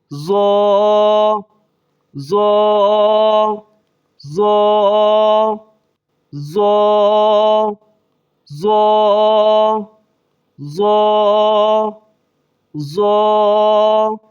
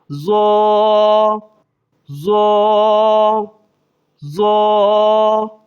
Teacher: اس کو زا کی آواز نہیں پڑھیں گے، زو پڑھیں گے، موٹا بھی کریں گے، ایک الف کے بقدر کھینچیں گے